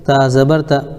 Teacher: جلدی پڑھیں، تھوڑا بھی نہ کھینچیں، زبر کی آواز اوپر کو اٹھتی ہے